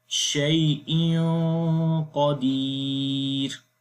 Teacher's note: کیونکہ قاف حروف استعلاء میں سے ہے، اور تنوین کے بعد حروف استعلاء میں سے قاف آ گیا تو آواز موٹا کریں گے، غنہ موٹا ہوگا، اور نون کی آواز کو ناک کے اندر چھپا کر پڑھیں گے